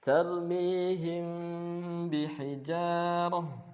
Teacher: mimnya dibaca khafi, samar. ketika bertemu dengan ba, indal ba, ketika bersanding dengan ba, bi gunnah dengan bacaan gunnah juga. Berdengung ya. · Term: ikhfa syafawi